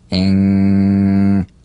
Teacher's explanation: with no drumbeat as the tongue leaves the soft palate at the end of the word